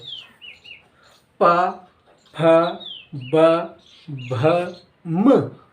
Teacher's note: उसके बाद आते हैं ओट्स व्यंजन, यानी कि ओठ। अब ओठ आपके चिपकेंगे, तो देखो बोलो प फ ब भ म, यानी कि ओठ से स्पर्श होती है। तो इन्हें बोलते हैं प्यारे बच्चों स्पर्श व्यंजन।